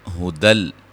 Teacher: نون تنوین کا یہاں ادغام، لیکن بلا غنہ، غنہ نہیں کریں گے